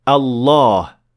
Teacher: There is definitely an alif here with a natural med of 2 harakat. But in the Quran, it was dropped from the word Allah because of how often the word is used in the Quran.